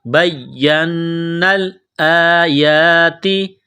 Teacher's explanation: اوپر تشدید ہے تو دونوں کو دبانا ہے سختی کرنی ہے نون مشدد پر غنہ کریں گے آواز ناک میں چھپائیں گے · یا کے اوپر تشدید ہے نون کے اوپر تشدید ہے تو دونوں کو دبانا ہے سختی کرنی ہے